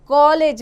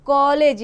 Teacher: यह आ और ओ के बीच की ध्वनि होती है। अ कोई ध्वनि का प्रयोग केवल उन्हीं शब्दों के लिए किया जाता है जो अंग्रेजी भाषा से आकर हिंदी में प्रयोग हो रहे हैं। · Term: आगत ध्वनि